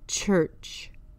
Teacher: and J the CH sound is unvoiced the tongue is pressed to the mid roof of your mouth there is no vibration just a Sharp air sound